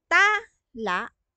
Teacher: ibinigay natin yung diin doon sa unang pantig na ta, may iba na pong ibig sabihin yan.